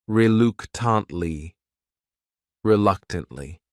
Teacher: This word has 4 syllables, and the stress is on that second syllable. That third syllable also has that schwa.